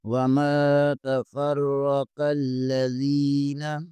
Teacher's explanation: زال زیر کے آگے یائے مدہ ہے، اسے بھی کھینچیں گے ایک الف کے برابر